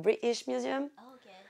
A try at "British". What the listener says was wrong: British Museum. Yeah, without the T. Pronounce it like that.